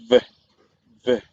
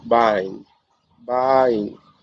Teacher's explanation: Let's go with the phoneme that is represented by the letter V, that is voice, and it is labiodental. V, V. That's one is fricative, and the word that we have here to show the sample is bind, bind.